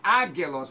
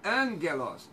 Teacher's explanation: gama, antes de gama, tem som de N. Não é, não é ágelos, é ângelos.